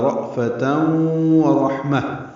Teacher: واو ہونٹوں کی نا تمام گلائی سے ادا کریں گے · ساکن جھٹکے سے ادا ہوگا، فا کو جلدی ادا کریں گے، تنوین کے بعد واو آنے کی وجہ سے ادغام ناقص ہے، غنہ ہوگا ، رأفتن ورحمہ، واو ہونٹوں کی نا تمام گلائی سے ادا · حمزہ ساکن جھٹکے سے ادا ہوگا ، فا کو جلدی ادا کریں گے، تنوین کے بعد واو